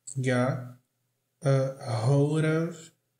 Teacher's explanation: O T aqui não é pronunciado.